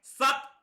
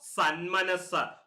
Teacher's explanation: പൂർവ്വപദത്തിന്റെ ഒടുവിലുള്ള ത എന്ന വർണ്ണം ഉത്തരപദത്തിന്റെ ആദിയിൽ മ എന്ന അനുനാസികം വന്നതുകൊണ്ട് സമസ്ത പദത്തിൽ തകാരം നകാരമായി മാറിയിരിക്കുന്നു